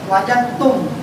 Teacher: Dalnya tidak dihilangkan sama sekali, tidak dihilangkan. Dal itu tetap ada, cuma dimasukkan ke dalam huruf ta. Sehingga di ta itu timbul tasdid. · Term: idgham mutajannis